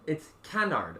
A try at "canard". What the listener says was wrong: Well, that's with an American accent, because usually you don't really pronounce the R-D. It's like canard.